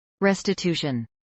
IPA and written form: ˌɹɛstɪˈtuːʃən (restitution)